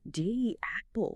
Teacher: When that e sound flows immediately into another vowel like the a in apple, your mouth naturally creates a tiny almost imperceptible y glide to bridge the gap